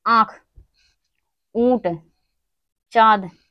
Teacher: अनुनासिक स्वर ध्वनियां होती हैं जिसका उच्चारण मुख और नाक की सहायता से किया जाता है।